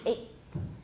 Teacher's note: So for some affricates, if the two places of articulation are very close, we can count it as an affricate. So eighth, the T plus a TH, they're close enough. We can count them.